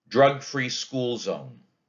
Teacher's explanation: syllable and then another stressed syllable it's two stressed syllables right in a row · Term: spondee